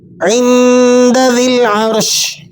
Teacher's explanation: عند، ذال لام زیر ذل، یا کو اور الف کو آپ نے سائلنٹ کر دینا ہے اور ذال کو لام سے ملا کر پڑھیں گے۔